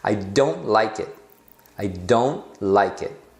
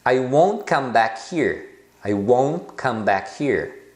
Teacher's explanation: o T você só faz a posição dele sem fazer o T do final